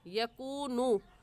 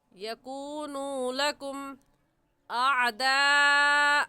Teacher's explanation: इसे एक अलिफ की मिक़दार खींचेंगे क्योंकि वाव साकिन से पहले पेश आ गया तो वाव मद्दा कहलाएगा, और वाव मद्दा को एक अलिफ की मिक़दार खींच कर पढ़ते हैं। ऐसे कहेंगे, यकूनू लकुम अअदाअ।